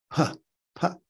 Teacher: P, your two lips have to come together and explode.